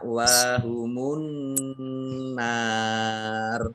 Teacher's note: Nun tasydid itu dibaca mendengung atau hunah · Kemudian langsung masuk ke huruf berikutnya yaitu nun ditandai dengan tasdid. Nah, nun tasdid itu dibaca mendengung atau gunnah. Ya, dengan ditahan 2 harokat.